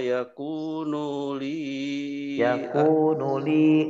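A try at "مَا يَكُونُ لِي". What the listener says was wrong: nunnya pendek.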